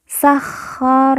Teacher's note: Kho bertasdid maka kita baca ditekan dan ditahan dua harakat